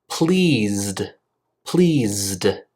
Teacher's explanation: voiceless if a word ends in a voiced sound pleased pleased since Z is voiced my throat vibrates